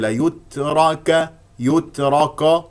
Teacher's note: ولدينا راء هنا مفخمه لانها مفتوحه والكاف مستفه